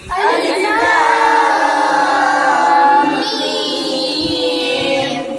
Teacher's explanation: میم ساکن کے بعد دوسری میم آ جائے تو گنہ ہوگا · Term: ادغام شفوی